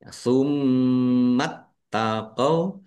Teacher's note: taknya dibaca double, ada tasdidnya, ditekan dan ditahan biar tampak doublenya